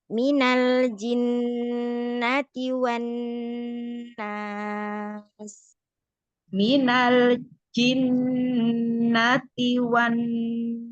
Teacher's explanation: Jangan lupa sempurnakan nun tasdidnya, Bunda, ya. Terus mina minya jangan panjang.